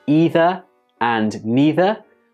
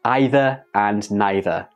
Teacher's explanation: do you pronounce these words with a long e like either and neither or do you pronounce them with an I like either and neither